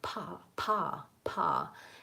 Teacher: If I just say a syllable though, the P sound and a vowel, like pa, pa, pa, it might be a little easier for me to do the aspirated P